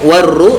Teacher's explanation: Ikatul warru, warru ada alif lam syamsiyah. Kemudian ru nya mad thabi'i dibaca dua harakat